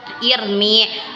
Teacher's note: Apabila ada kasrah sebelum ro, maka dibaca tarki atau tipis.